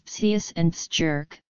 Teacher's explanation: when followed by some vowels, the Germanic K softened to a CH sound